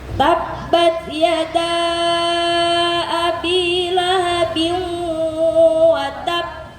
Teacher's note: Perhatikan yada panjang ya. Mad jaiz munfasil.